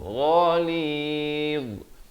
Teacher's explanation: ghain makhrajnya di hujung kerongkong